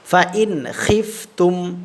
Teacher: আচ্ছা, তাহলে এখানে আমরা ইজহার করে পড়ব, এই নুন সাকিনে কোনো গুন্না করব না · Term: নুন সাকিনের ইজহার